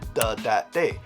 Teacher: Words that begin with a TH, like the, that, and they, are often pronounced as if they began with a D. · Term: more D sounds